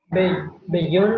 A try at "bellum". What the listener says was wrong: Bellum. Pero en latín lo tenemos que pronunciar separado porque la doble L no existe. Entonces se pronuncia bellum. La doble L se separa. Cuando tienen dos letras juntas se van a pronunciar separadas.